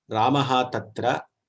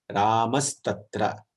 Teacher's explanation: Visarga is getting transformed into Sakara and there is an Adesha which is happening. Visarga is not seen, but Sakara is seen. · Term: Sakaradesha